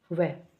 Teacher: उसमें आता है जो हमारा अंतस्थ व्यंजन होता है एक व अकेला वो व बोल के देखो। व बोलोगे तो हमारे होठ भी आपस में टच हो रहे हैं और जो हमारी जीभिया है वो दांतों को भी टच कर रही है। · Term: दंतोष्